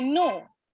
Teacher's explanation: the tongue is touching the alveolar ridge